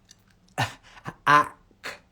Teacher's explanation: To get the k sound, it goes, the back of the tongue goes up.